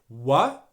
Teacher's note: making the w sound at the beginning of this word wha and not making a v sound